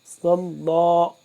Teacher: لفظ اللہ کو پر کر کے پڑھیں گے کیونکہ اس سے پہلے والے جو صاد ہے اس کے اوپر زبر ہے · صاد کو موٹا کر کے پر کر کے پڑھیں گے